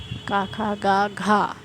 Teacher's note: मतलब खा और घा महाप्राण कहलाता है